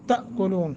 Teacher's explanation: جھٹکا دے کے پڑھنا ہے، حمزہ ساکن ہے